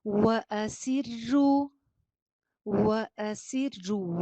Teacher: وا پہ ہونٹ گول، سین میں سیٹی اور زیر باریک.